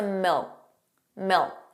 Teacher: And milk sounded like milk. So did you hear that the final K sound, that K, was not pronounced? It was just a milk.